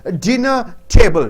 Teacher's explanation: Dinner is a noun. Table is a noun. Dinner should be stressed.